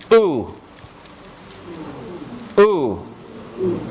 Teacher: created by taking the tongue back raising it rounding the lips